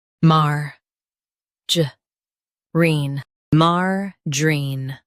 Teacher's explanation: Stress mar and keep juh soft.